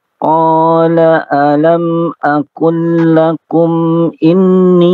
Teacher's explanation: alam aqul lakum, jangan ditahan dari lam ke lam itu, jangan ditahan.